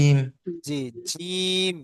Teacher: এই জিমটা হচ্ছে জিভের মাঝখান আর দুইটা উপরের দাঁতের মাঝখানের অংশটাকে মিলিয়ে করতে হয় জিম অর্থাৎ মোটা উচ্চারিত হয় জিমটা বুঝতে পেরেছেন جيم জি জিম